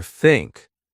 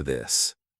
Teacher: Put your tongue between your teeth. Push air out for think. Add voice for this.